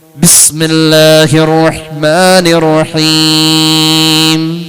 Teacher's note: ഒരു ബിസ്മി പറയാൻ ബിസ്മില്ലാഹിർ റഹ്മാനിർ റഹീം. കണ്ടോ, മൂക്കിലൂടെ അവസാനിച്ചു വന്ന മീമിന്റെ നാദം രണ്ട് ചുണ്ടാൽ പിന്നെയും ചേരേണ്ടി വന്നു